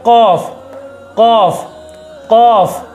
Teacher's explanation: सख्ती के साथ थोड़ा मोटी आवाज़ से